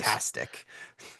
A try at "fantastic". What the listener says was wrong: really got to pronounce that T. otherwise, I'm like, oh yeah, I've watched a couple hockey games this year.